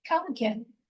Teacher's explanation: Why? Because the A in again is a schwa sound.